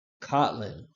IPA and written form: ˈkɒtlɪn (Kotlin)